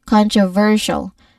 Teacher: We stress on ver, the third syllable. Avoid saying controversial with equal stress on every syllable.